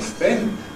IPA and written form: speɪn (Spain)